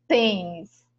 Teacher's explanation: Pronunciado de forma mais grave, né? Mais fechado, né? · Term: acento circunflexo